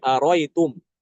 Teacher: Aro'aita jadi aro'ita. Aro'aitakum, aro'itakum. Aro'aitum, aro'itum. Hamzah yang kedua dibuang.